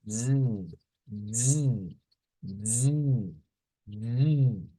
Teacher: Esta vibración viene desde acá, desde las vocal cords o las cuerdas vocales, son las que vibran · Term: la vibrante